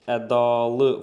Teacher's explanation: Burda a uzanır. Vurğu da sona düşür. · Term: uzanma